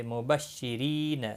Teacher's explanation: را زیر کی وجہ سے باریک پڑھا جائے گا